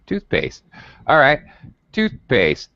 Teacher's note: toothpaste the first word gets primary stress and the second word does not the second word gets what's called secondary stress it is also